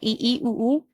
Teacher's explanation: इ ई उ ऊ ये संवृत मतलब तुम्हारा मुंह क्लोज हो रहा है ऐसे तो इ ई उऊ में मुंह क्लोज हो रहा है · अपने मुंह को हम बंद रखेंगे तो संवर्त हो गया। उसमें है तुम्हारे आगे वाले ई ई उ उ, ठीक है, ई ई उ उ, ये संवर्त, मतलब तुम्हारा मुंह क्लोज हो रहा है ऐसे।